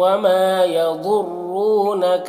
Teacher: یضر ضاد کو پر پڑھنا ہے، حروف مستعلیہ میں سے ہے